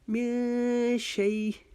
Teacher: ہم پھر ایک الف کے جتنا اخفا کریں گے، میں شیء اگر ہم وقف کریں گے تو ہم اس کو دو زیر کی تنوین جو ہے اس کو ختم کر دیں گے